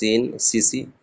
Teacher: সিটি কেটে বেরোবে হালকা করে